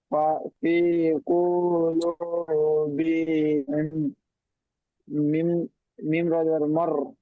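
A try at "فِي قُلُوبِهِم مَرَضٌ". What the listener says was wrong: র কেন ধরছেন? র তো, র এর উপর তাজদিদ নেই তো। ফি কুলুবিহিম, মিম জাবার মা।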